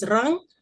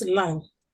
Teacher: So the R is becoming an L. The trill is becoming a lateral in all three word positions word initially word finally and also intervocalically word immediately between vowels. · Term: lateralization